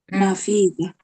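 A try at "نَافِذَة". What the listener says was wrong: nanya panjang. Nafidah.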